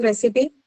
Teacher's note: recipe is a noun so it is going to be stressed on what the first syllable